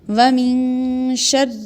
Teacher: ومن شر نون ساکن پہ یہاں بھی اخفا ہوگا کیونکہ شین حروف اخفا میں سے آ رہی ہے، اور را کو باریک یعنی پتلی آواز میں پڑھیں گے